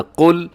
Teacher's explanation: قل میں قاف موٹا رکھیے گا اور لام کو آپ نے ہلانا نہیں ہے، قل ایسے نہیں کہنا، قل۔